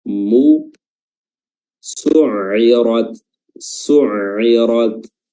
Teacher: huruf mim juga yang dhammah, ya, dhammahnya bibir dimonyongkan dengan sempurna